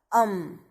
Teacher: जब हम अम बोलते हैं तो हमारी जो आवाज है नासिका से निकलती है, इसलिए इसको नासिका नाम दे दिया। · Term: अनुसारा